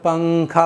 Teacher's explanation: زبان کی نوک یہ ہے، اوپر کے مسوڑے یہاں ہوتے ہیں تو یہ زبان کی نوک اوپر کے مسوڑوں پر نہیں لگاتے ہیں ہم جب ہم پنکھا کہتے ہیں